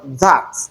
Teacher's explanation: For instance, in the word that, the first sound you have there is a dental sound because you cannot realize it without placing the tip of your tongue in between your upper and lower teeth.